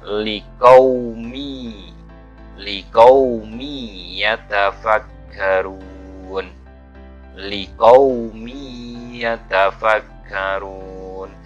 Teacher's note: Jadi tanwinnya itu sebenarnya liqaumin, tapi langsung masuk dan bertasdid kepada huruf ya. Ini adalah tanwin bertemu dengan ya. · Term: idgham bi gunnah